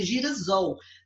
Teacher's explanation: Juntando esses 2, eu preciso de uma letra S aqui, ó, simplesmente para fazer uma ligação entre eles, porque para manter o som do S, né? Porque se eu juntasse gira com sol, o S entre 2 vogais tem som de Z, então ia ser girasol.